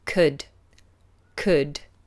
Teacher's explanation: noticed that we don't pronounce the L